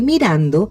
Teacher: al decir mirando cargamos la voz en la sílaba dan que también lleva la vocal a